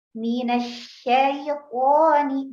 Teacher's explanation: untuk ya sukun itu dekat dengan vokal i.